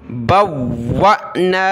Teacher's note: واو کے ساتھ ملا ہے واو کو حمزہ ساکنہ کے ساتھ واو کو سخت کریں گے اور حمزہ ساکنہ پر جھٹکا دینا ہے